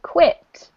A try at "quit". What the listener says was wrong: you got to make sure you say quit with a short I sound.